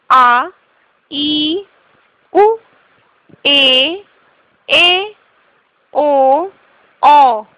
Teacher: चार प्रकार के होते हैं अ इ उ ऋ दीर्घ स्वर इन स्वरों के उच्चारण में ह्रस्व स्वरों से दुगना समय लगता है